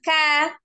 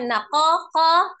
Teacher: Karena beda ya sifatnya. Kalau huruf kaf kan alhams, tapi kalau huruf qafnya al-jahru, jahal ya, jahar ya.